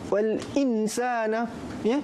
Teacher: nun mati bertemu sin dibaca dengung dan ikhfa. Tidak boleh dibaca izhar.